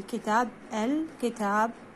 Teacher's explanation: تلفظ اللام لأنها دخلت على حرف قمر اللي هو الكاف، وتلفظ على النحو الآتي: كتاب الكتاب، هنا الكتاب. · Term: لام قمرية